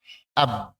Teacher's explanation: Dan ternyata suara bertumpu dari 2 bibir. Maka para ulama menentukan atau menyebutkan ba itu dari kedua bibir.